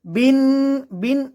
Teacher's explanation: বিন বিন ওয়াজিব গুন্না 1 আলিফ পরিমাণ গুন্না করে পড়তে হবে। বিন নাওয়া, ওয়া এখানে 1 আলিফ পরিমাণ টান হবে।